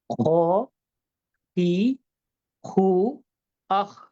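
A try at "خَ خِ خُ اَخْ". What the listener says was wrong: খই খই, আবার জের অবস্থাটা বলেন। খি না, খই। যে এমন একটা বাতাস আছে না, খ খই।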